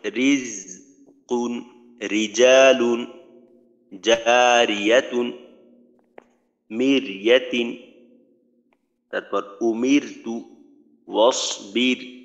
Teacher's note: রয়ে যদি জের হয় বা র সাকিন তার ডানে জের হয়, তাহলে রকে পাতলা করে পড়তে হবে